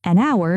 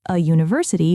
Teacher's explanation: an hour because the h is silent, but a university because it starts with a u sound, not an h sound.